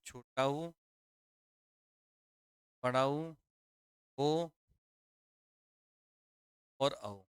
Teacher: होठ का आकार गोल हो जाता है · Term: वृत्तामुखी स्वर